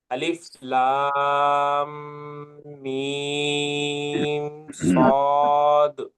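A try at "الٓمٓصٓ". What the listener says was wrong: صرف تھوڑا سا دورانیہ بڑھائیے، باقی سب بہتر ہے. یعنی لام اور میم اور صاد کی جو کھینچنا ہے نا، اس کھینچنے کو اور ایک ایک سیکنڈ اور بڑھائیے، یہ کہنا چاہ رہا ہوں میں.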